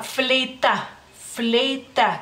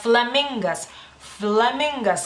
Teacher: Es una consonante sorda en lituano y labiodental, lo que significa que los dientes de arriba los ponemos en el labio inferior. Lo mismo ustedes hacen cuando pronuncian la F en español, en las palabras en español.